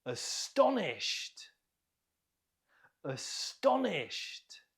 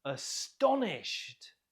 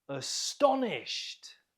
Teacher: Note the stress on the second syllable.